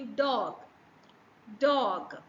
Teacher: do you see that there is a vibration when you pronounce the word dog